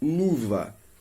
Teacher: quando dizemos luva, repitam comigo, luva, pronunciamos a vogal U sem que haja qualquer interrupção para o ar.